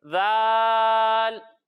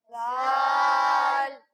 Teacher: جب ہم ذال کی ادائیگی کریں گے تو اس میں سیٹی کی آواز نہیں آئے گی، اور جب ہم زا کی ادائیگی کریں گے تو اس میں سیٹی کی آواز آئے گی